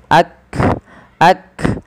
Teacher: Yang pertama adalah syiddah, tertahannya suara, dan hamas, dia mengadanya nafas kita. Maka ketika melafalkan huruf kaf ini, yang langkah pertama adalah tahan suaranya, barulah alirkan nafas